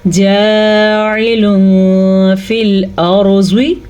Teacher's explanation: जब भी 2 ज़बर 2 ज़ेर 2 पेश या नून साकिन के बाद वाला हर्फ हरूफ इख्फ़ा में से होगा तो नून साकिन की आवाज़ भी छुप जाएगी और नून तनवीन की आवाज़ को भी छुपा के पढ़ेंगे, लेकिन गुन्ने के साथ